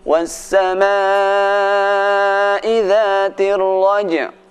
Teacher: suara jim dibaca dengan kuat qalqalahnya.